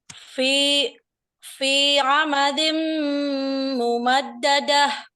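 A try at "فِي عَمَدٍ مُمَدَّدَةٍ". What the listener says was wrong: Fi amadim, diperlama lagi, gunahnya belum cukup lama itu.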